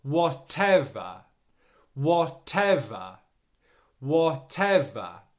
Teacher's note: stress is on the second syllable so whatever whatever whatever okay that second syllable is the stressed one it should be louder slightly longer · The stress is on the second syllable.